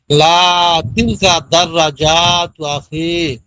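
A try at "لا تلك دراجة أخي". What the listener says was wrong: দাররাজাতু আখি, মহিলাদের মতো পড়া কই পেয়েছেন? দাররাজাতে কি টান আছে? যত মহিলাদের পড়া, গ্রামের মহিলারা পানিতে পড়ে সব অক্ষরে টান দেয়।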